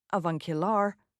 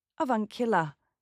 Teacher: Americans tend to say the R at the end, avuncular, whereas the British will say avuncular.